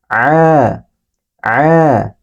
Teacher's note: Keluarnya ini dari tenggorokan. Dari tengah-tengah tenggorokan.